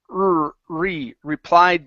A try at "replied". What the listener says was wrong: So you're still pronouncing a Portuguese R saying he. It's replied.